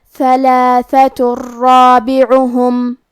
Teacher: کلمت رابعہم را حروف الادغام بغیر غنہ میں سے ہے اور ادغام کا معنی ہے حرف کو حرف میں داخل کرنا. تو ہم یہ تنوین کو را میں ملا کے بغیر غنہ سے لیکن تشدید کے ساتھ یہ حکم کو ادا کریں گے